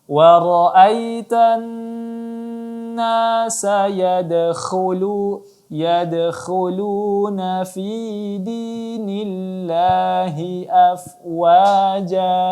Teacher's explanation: Iya, wa ra'aitan, ditahan lagi 3 sampai 4 harakat. Kemudian yadkhulu, kha ditebalkan lagi.